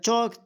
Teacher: च तालु से बोला जाता है।